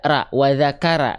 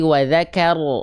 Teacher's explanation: huruf ro ketika dia berharakat fathah mesti dibaca dengan keadaan yang tebal